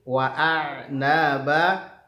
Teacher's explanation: Wa a'naba, kemudian ada huruf ain, perhatikan punya sifat tawassut, alirkan sedikit bunyi ainnya itu ya